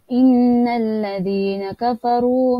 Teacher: Inna dibaca dengung secara 2 harakat kerana dia gunnah, nun ada tanda sabtu maka dia gunnah.